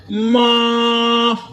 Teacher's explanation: मीम पर खड़ी है, मीम को थोड़ा सा लंबा करना है